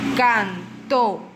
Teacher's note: Esta palabra lleva la fuerza de la voz en la última sílaba y la tildamos porque termina en vocal.